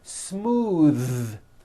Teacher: believe it or not the th sound in smooth is voiced most foreign speakers say this word incorrectly they say smooth with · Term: voiced th